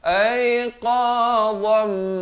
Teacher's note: Qa ni makhrajnya di pangkal lidah kita di belakang ini